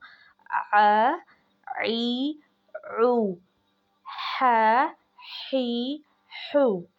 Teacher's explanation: हमज़ा और हा की आवाज़ जो है वो गले के नीचे वाले हिस्से से, हलक के नीचे वाले से हिस्से से निकलेगी हमज़ा।